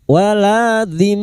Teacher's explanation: mim yang bertasdid gunna musyaddada kita dengungan selama 3 harokat